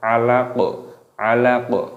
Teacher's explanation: Jangan min 'alaq, tidak boleh, harus jelas. Dan qafnya di sini dipantulkan suaranya, diqalqalah